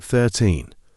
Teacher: we stress the second syllable it sounds like 13